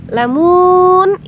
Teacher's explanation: say say Ain ya saya ya sayamun lamun itu Mad sukun kita pilih saja dua Alif atau empat harakat